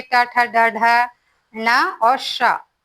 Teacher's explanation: मूर्धन्य यानी तालु के मूर्ध भाग से